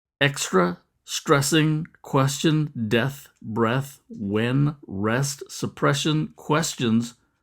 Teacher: Those repeated eh sounds help create the sound and rhythm of those lines. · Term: assonance